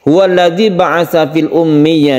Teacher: Jadi kita tekan ya-nya, kemudian kita baca huruf ya-nya tersebut dengan panjang 1 alif. · Di sini ada tasydid mim yang harus kita gunakan, kita panjangkan. Kemudian ya yang panjang ini dan ya itu sebelumnya ada tasydid, maka ini kita namakan mad tamkin.